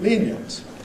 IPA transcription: ˈliːn-jənt